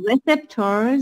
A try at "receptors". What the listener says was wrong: Don't pronounce it like this. Not receptors. The stress is on the first syllable, yes.